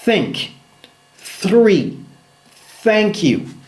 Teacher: Le TH sourd, langue toujours entre les dents, mais maintenant sans vibration.